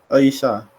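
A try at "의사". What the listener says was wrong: Ei ya, dibacanya Eisa, betul. Eisa. Bukan Esa, Eisa ya.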